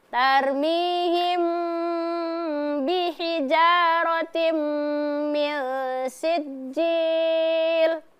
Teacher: Mimnya didengungkan ya, tetapi tetap kedua bibir apa? Dalam keadaan tertutup.